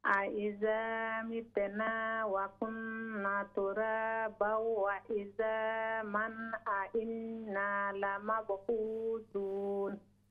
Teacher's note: there are quite a few standing alif maddas are missing, so we need to stretch them